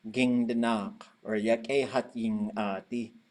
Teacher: It's a bit of a nasal, it's almost like saying a Y through your nose. It almost sounds like an N.